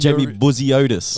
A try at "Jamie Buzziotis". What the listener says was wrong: Yeah, turn the accent down. You're not Greek.